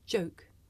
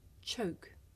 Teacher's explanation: the voiced sound that you hear at the beginning of the word joke and it's voiceless partner that you hear at the beginning of the word choke